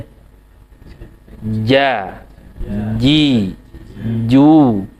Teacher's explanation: jadi nempel suara tertahan udara tertahan kemudian lepas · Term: Jim